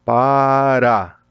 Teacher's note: oxítona terminada em A, você tem, por exemplo, o estado lá do Pará, Pará, tem acento na última. Quando você tem paroxítona, casa, por exemplo, termina em A, mas a mais forte é a penúltima.